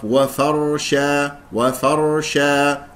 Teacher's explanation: الراء المفخم راء ساكنه قبل مفتوح مفخمه فالفاء مرققه والشين مرققه وفرشا وفرشا هكذا نقف عليها بمد العوض حركتين · كل حروفها مرققه وفرشا تقول وفا وفرشا لان جاورت الراء المفخم راء ساكنه قبل مفتوح مفخمه فالفاء مرققه والشين مرققه